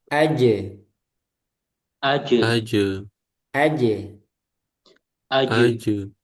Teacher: Nah, sekarang kita latih huruf jim Jadi kita sudah tahu makhrajnya keluar dari mana, yaitu tengah lidah ke langit-langit atas.